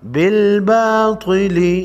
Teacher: طا کو موٹا پڑھیں گے، حروف مستعلیہ میں سے ہے